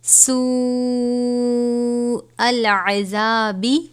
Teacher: یہ بڑی مد ہے، 5 الف کے برابر کھینچ کر پڑھیں گے